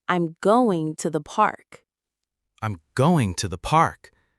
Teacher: the stressed words are going and park. The unstressed words are I, am, to, the. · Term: sentence stress